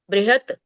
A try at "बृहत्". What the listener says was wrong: किम एषः बृहत्, बृहता नहीं है, मैं उसको सुधार रही हूँ। बृहत्, उसको बोलेंगे बृहत्, क्योंकि त में स्वर नहीं है, त आधा